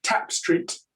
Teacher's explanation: the vowel is slightly shorter in front of the P